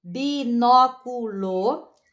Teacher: a sílaba tônica recai sobre a antepenúltima sílaba né a pronúncia forte recai na antepenúltima sílaba